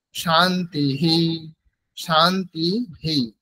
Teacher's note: বিসর্গের উচ্চারণ করার নিয়ম হচ্ছে আগের যে স্বরবর্ণটি আছে, যেমন তয়ে হর্ষি আছে, দন্ত ন ত, তারপরে হর্ষি আছে, তাহলে হ্রস্ব ইকার আছে, তাহলে হ্রস্ব ইকারের পরে বিসর্গ আছে, সেই জন্য বিসর্গের উচ্চারণ সাধারণত হকারের মতো হয়, কিন্তু এখানে যেহেতু আগে হ্রস্ব ইকার আছে সেই জন্য উচ্চারণ হবে হি